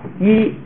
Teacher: 这个嘴闭的比较小，就叫闭元音